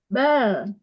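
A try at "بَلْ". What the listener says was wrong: Jangan bal. Jangan bal. Jangan diseret.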